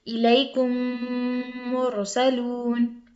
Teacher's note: میم ساکن کے بعد میم آ جائے تو وہاں ادغام ہوگا، یعنی ملا کر پڑھیں گے، ایک میم کو دوسرے میم سے ملا کے پڑھیں گے